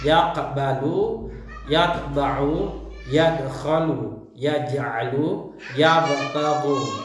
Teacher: pantulan suara huruf qalqalah lebih kecil karena huruf qalqalahnya itu mati asli berada di tengah-tengah di tengah-tengah kata atau kalimat. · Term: qalqalah sugra